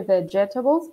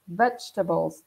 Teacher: vegetables and the second e is silent so you don't say vegetables' but vegetables three syllables yeah that's